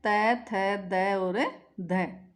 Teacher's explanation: दंत यानी दांत। जिन वर्णों का उच्चारण करते समय जिह्वा का अग्रभाग दांतों से टकराता है वे दंत वर्ण कहलाते हैं · जिह्वा आपके दांतों से जाकर टकराती है, तो ये दंत वर्ण कहलाते हैं, जिनका उच्चारण करने में जिह्वा दांत से जाकर टकराए।